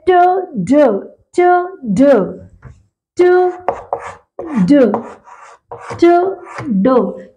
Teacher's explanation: अभी ये ट और ड में कहा रहेगी, tip of the tongue, then teeth ridge